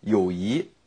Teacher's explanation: in the beijing dialect they'll say yoyi they'll say it in the second tone